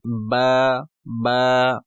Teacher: होंठों को आपस में मिलने से अदा होता है